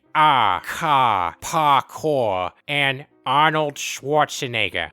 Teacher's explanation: he doesn't pronounce his R's. His R's sound like ah, ka, parkour, and Arnold Schwarzenegger. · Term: Boston accent